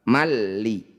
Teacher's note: Bunyi fathah tanwin masukkan pada lam malalli langsung ke lam bila gunah artinya tanpa mendengung tanpa ditahan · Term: Idgham bila gunah